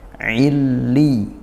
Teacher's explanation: Nah di sini lam tasydid ketemu ya tasydid juga. Jadi dua huruf tasydid berjejer hati-hati ditekan dua-duanya ditasydidkan